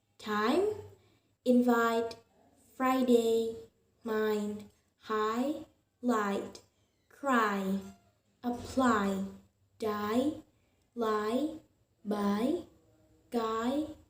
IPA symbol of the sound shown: aɪ